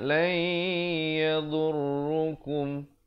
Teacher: Sebut saja kum di sini izhar syafawi, jangan dipanjangkan.